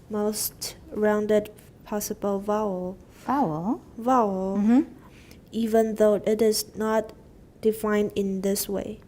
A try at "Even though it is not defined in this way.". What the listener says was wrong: 不要那么重. In this way 是刚讲过的, so it's repeated.